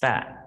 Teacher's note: khúc đầu sẽ không có rung ở cổ họng, và tiếng âm at nó mới rung